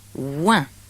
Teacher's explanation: Sometimes the sound wa combines with an N to become nasal.